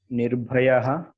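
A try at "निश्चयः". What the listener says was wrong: It's not Nirbhayaha. You can see what are the consonant given there. Shakara plus cha is cha. Then how can you read Nirbhayaha? Nishchayaha. See, the consonants are given at the left hand side.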